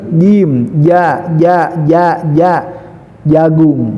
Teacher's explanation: jadi mahrajnya adalah tengah-tengah lidah, taikan ke atas langit-langit sampai ketemu